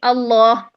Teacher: پہلے سے ہی لام، دونوں لام موٹے کریں. اگر ہم کریں اللہ، ایل پہلے لام باریک کر دیا اور دوسرا لام موٹا کر دیا، یہ غلط.